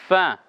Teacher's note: ফা বলি যখন আমরা তখন বলি দুই দাঁত নিচে ঠোঁটের পেট